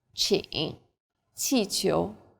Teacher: Qi is like the CH in cheap, but again with a flatter tongue and a stronger puff of breath.